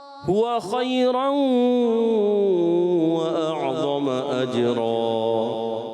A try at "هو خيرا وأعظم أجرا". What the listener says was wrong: کیا غلط تھی؟ غلطی کیا تھی؟ غنہ آپ نے کمزور کیا تھا. هو خيرا وأعظم أجرا.